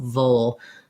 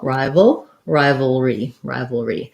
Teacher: i either do a little bit of a schwa sound or i go right from the v to the dark l